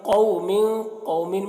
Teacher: میں قاف کو پر پڑھیں گے، یہاں پر واو لین ہے